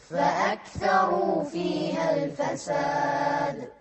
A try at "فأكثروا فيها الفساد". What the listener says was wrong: الواو هني واو مادية. فأكثروا لازم تطلع الواو من الجوف، ما تقول فأكثروا، لا تطلعها من خشمك. فأكثروا فيها الفساد.